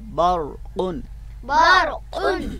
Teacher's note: बरक़ुन, बरक़ुन आगे लफ्ज़ है बरक़ुन, बरक़ुन तो रा जो है यहाँ पे साकिन है यानी इसके ऊपर जज़म है, तो जब रा जज़म वाला होता है, जज़म के साथ होता है और यानी साकिन होता है, तो फिर भी हम इस रा को पुर करके पढ़ते हैं, मोटा करके पढ़ते हैं